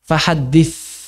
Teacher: hams rikhwah. Pelan-pelan dan lemah lembut. Kenapa? Ini di bagian terakhir.